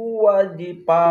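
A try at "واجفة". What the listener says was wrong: wa panjang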